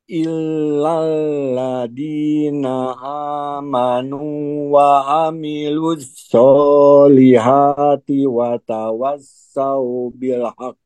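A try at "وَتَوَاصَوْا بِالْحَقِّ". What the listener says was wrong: Oke, pas watawa dibacanya sau, bukan dibaca watawa sau ya. Terus qafnya pantulkan, Prof. Watawasau bil haqqo.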